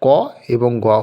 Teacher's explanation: বর্গের প্রথম এবং তৃতীয় অর্থাৎ ক এবং গ হলো অল্পপ্রাণ ধ্বনি